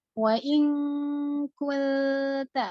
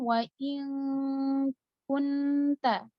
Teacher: Oke, jadi yang pertama di bagian wa in kulta, kultanya itu juga ikhfa, nun sukun ketemu dengan huruf ikhfa yaitu huruf ta. Itu juga samar. Wa in kulta, bukan wa in kunta.